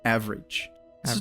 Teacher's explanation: The syllable that has the emphasis there is the first one, so it's like ah, and then the rest of the word you can say it pretty quickly.